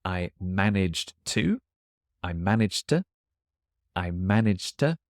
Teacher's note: the to before a verb gets very shortened to t